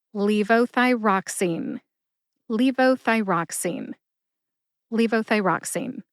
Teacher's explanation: Emphasize LEE and ROX. Emphasize ROX the most.